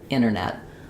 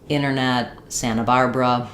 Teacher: the NT can often just become only an N sound in the middle.